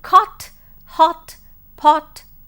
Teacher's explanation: the short vowel o as in cot, hot, pot, etc., which is present just above the open position in the back portion of the vowel diagram.